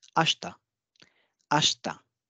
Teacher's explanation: sh and th. So these are the two unvoiced consonants and E is appearing in between them. That's why this E will get devoiced. E will get devoiced, and so we have this, it's sounding as ashita, ashita.